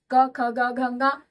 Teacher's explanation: तो एक तो क वर्ग हो गया जो कंठ से बोला जाता है।